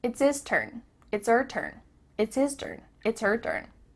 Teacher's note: The H at the beginning of his and her is cut off.